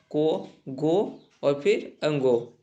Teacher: कोजो को अजो तो दोस्तों ये अल्प प्राण किसे कहते हैं जिसके बोलने में मुंह से हवा कम निकले उसे अल्प प्राण कहते हैं